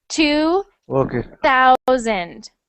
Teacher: that sound th sound your tongue actually sticks out of your teeth